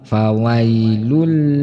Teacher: dengan lama maka hukum bacaannya adalah idgham bilagunnah cara membacanya yaitu ketika membaca tanwin Lun itu langsung dimasukkan atau di tasdid kan ke huruf lam dengan suara tanpa mendengung